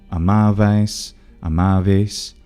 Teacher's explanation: The imperfect tense goes from amabas to amavas. That S starts to palatalize the preceding vowel, so it becomes something like amavais, amaves.